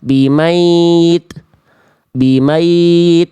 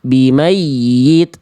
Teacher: Jadi ada penekanan yang ekstra di huruf ya tasydid.